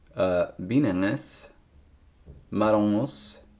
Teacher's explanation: It's it synergizes with that sound change where you get nasal vowel followed by velar nasal, and then the nasality stops. So binanes and marongos, or binane maronon.